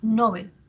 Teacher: Si nosotros, por ejemplo, pronunciamos Nobel, estamos haciendo que la sílaba tónica esté en no, ¿cierto? Y mientras que Bel hacemos que sea la átona, Nobel.